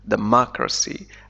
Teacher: الشدة توجد على M، democracy، على المقطع الثاني. فالتعرف على عدد المقاطع في الكلمة يمكنك من معرفة أين تضع الشدة.